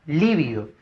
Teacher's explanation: fuerza de voz en la li, y como es esdrújula